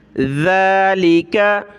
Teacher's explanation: ज़ाल खड़ा ज़बर ज़ा, ज़बान निकालें थोड़ी सी